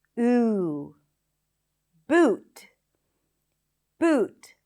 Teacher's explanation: The high back vowel is a tense oo sound